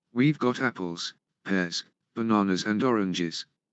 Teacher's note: Lists, rising, rising, rising, falling. Intonation falls on the last item to show that the list is finished.